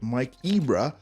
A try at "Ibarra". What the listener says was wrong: It's like Mike Ibarra. Mike Ibarra. It's not It's not Ibra, it's Ibarra.